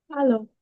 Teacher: porque usa la A del español y la O del español